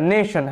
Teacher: আচ্ছা, নেশন, হ্যাঁ, তো এখানে টি এর উচ্চারণটা শয়ের মতো হচ্ছে